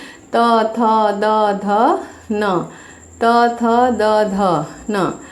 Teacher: श्वास वायु दांतों से टकरा कर आती है, जैसे कि त, थ, द, ध, न, त, थ, द, ध, न। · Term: दंत्य